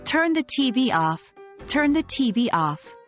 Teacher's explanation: when the object comes in between the stress moves to the object